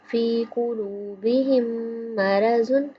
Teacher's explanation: قلوبہم میم مشدد پہ غنہ کریں گے